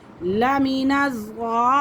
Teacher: مِن قَبْلِهِ لَمِنَ الضَّالِّينَ، یہ مد ہے، مد یہ بھی 3 سے 4 الف کے برابر کھینچ کے پڑھیں گے،